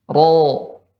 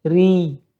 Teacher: Adapun ra tipis sebaliknya, ya pangkal lidahnya ya tidak naik ke atas dan bagian tengahnya tidak cekung. Dan suara untuk ra yang tebal dinaikkan ke atas, pangkal lidahnya naik, ya. Sedangkan ra yang tipis pangkal lidah tidak naik dan suara diarahkan ke bawah.